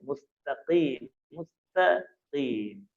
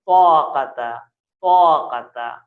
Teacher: بس تے اور تو میں یہ فرق ہے، تے پتلا اور تو کو موٹا ادا کیا جائے گا